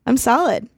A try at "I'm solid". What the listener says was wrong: You're solid. almost sounded like you said salad. I'm so salad right now.